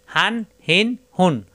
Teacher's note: উচ্চারণ হবে কণ্ঠনের শুরু থেকে কোন চাপ সৃষ্টি হবে না